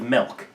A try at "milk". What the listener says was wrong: Are you saying milk or milk? It sounded like you said it with an E, and I was about to